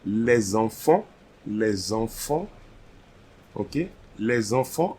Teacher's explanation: So same like liaison starting with X, the liaison starting with S will create a letter Z.